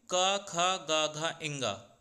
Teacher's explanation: जब कभी भी आ, क ख ग घ इंगा, ह अथवा विसर्ग जिसे हम अह बोलते हैं, जब भी आप इन वर्णों का उच्चारण करते हैं तो प्रायः आप देखेंगे कि आप कंठ के द्वारा, आप अपने गले के द्वारा ही सामान्यतः इसका उच्चारण कर रहे हैं। जो आपकी वायु आ रही है वो वायु सीधे आपके गले से ही निकलकर इन वर्णों का उच्चारण हो रहा है। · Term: कंठ उच्चारण स्थान